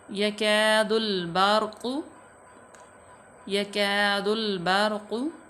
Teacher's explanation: तो या जो है इसको या मफ्तू है, काफ भी मफ्तू है और अलिफ से पहले जो है वो मफ्तू है यानी कि ज़बर है, तो इसको लंबा करेंगे, अलिफ मद्दा हो जाएगी। यकादुल बारक़ु, यकादुल बारक़ु, रा साकिन मा कबल मफ्तू, तो रा पूर पड़ी जाएगी।